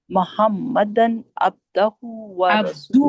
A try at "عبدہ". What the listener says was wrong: عبدہ، دال پہ پیش ہے، عبدہ.